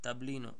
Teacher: Втората самогласка одназад е и, на неја има капче, значи е долга, значи се чита со акцент на и, таблино. Не таблино, нити таблино.